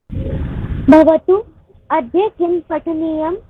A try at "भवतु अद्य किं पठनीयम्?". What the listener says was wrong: हाँ, यहाँ पे पाठनीयम लिखा है, पठनीयम आएगा। ठीक है, भवतु अद्य किं पठनीयम?